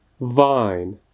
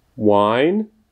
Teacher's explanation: hláska V se vyslovuje jako typické české V, jako například ve slově výslovnost, zatímco to dvojité V vyslovíme tak, že vyšpulíme rty, jako bychom chtěli například někoho políbit, anebo říct U, hlásku U, ale místo toho potom řekneme V.